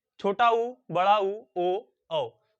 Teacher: ऐसे वर्ण जिनका उच्चारण करते समय हमारे ओठ की स्थिति गोलाकार हो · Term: वृत्तमुखी